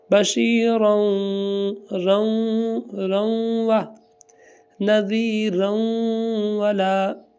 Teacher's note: بشیرًا، دو زبروں کے بعد جب بھی واو آتی ہے تو وہ دونوں کی دونوں زبریں پڑھی جاتی ہیں اور گنہ بھی ہوتا ہے۔ تو تنوین کے بعد واو آ رہی ہے تو گنہ ہوگا